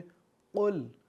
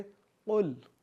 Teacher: जो नुक्ते वाला क़ौफ़ है ये हरूफ़ मुस्तालिया है, तो जिसको हम पुर पढ़ेंगे। जो 7 हरूफ़ मुस्तालिया हैं क़ौफ़ जिसमें आता है, तो हम इसको पुर यानी मोटा पढ़ेंगे क़ुल।